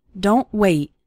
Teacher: Again, we have 2 more examples of a T sound at the end of a word, sounding just like a sudden stop and not necessarily like t.